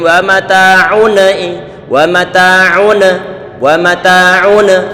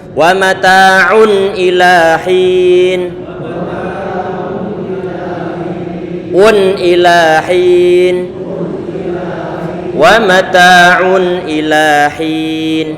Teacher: tanwin bertemu dengan hamzah ini bacaan izhar, jangan diberikan qalqalah, enggak boleh wa mata'un wa mata'un, ini enggak boleh, tapi ditahan sedikit suara dengungan pada bacaan izhar tersebut.